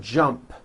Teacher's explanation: the final sound in jump is a P which is unvoiced